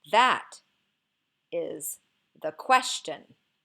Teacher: the emphasis here is on the word that